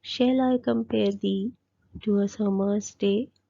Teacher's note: तो इस लाइन में टोटल 10 syllables है and follows a stress pattern of da dum da dum da dum da dum da dum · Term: iambic pentameter